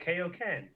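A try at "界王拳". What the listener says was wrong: It's Kaioken. Okay, it's like King Kai. It's not like King K. It's King Kai. Kaioken.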